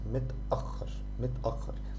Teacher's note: To make the pause like here mit, and then you pause and you start as if you're starting a new word with the letter a. So it's متأخر.